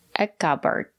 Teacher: letter P silent we don't pronounce the letter P a cupboard it's a two syllable word that stresses on the first syllable a cupboard the second syllable is not stressed we pronounce it